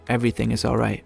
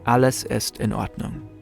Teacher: In many other languages, the words of a sentence are spoken in a flow. In German, sometimes there's a mini pause before each individual word.